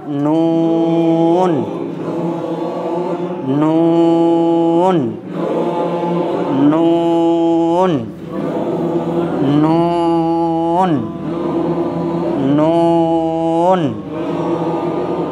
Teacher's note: জিভের আগা অপর দাঁতের গোড়ায় লেগে জিভটা ফিরে আসবে, আবার লাগবে, উচ্চারণটাকে লম্বা করতে হবে।